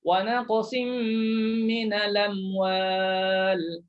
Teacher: Bila tuan-tuan pindah, Hamzah tu baris atas, maka pindah kepada lam, lam tu jadi berbaris dengan baris atas. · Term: naqal